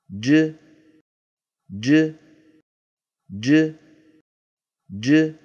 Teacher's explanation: السكون ج ضغط الصوت المحبوس خلف المخرج وانطلاقه يحددان معالم الصوت هذه جيم ساكنه مقلقله